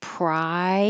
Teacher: your tongue goes very high and then slides down for prior. So it looks different than it sounds.